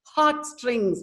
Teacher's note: heart strings both are stressed uh syllables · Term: spondy